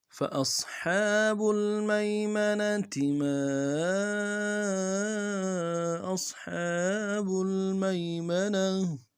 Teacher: فا کو نرم سے ادا کریں گے، حمزہ کو صاد کے ساتھ ملانا ہے، صاد کو موٹا ادا کریں گے۔